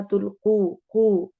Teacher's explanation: वाव मद्दा और कॉफ को मोटा करना है, तुल्कू नहीं पढ़ना, तुल्कू, कू कॉफ को मोटा करते हुए।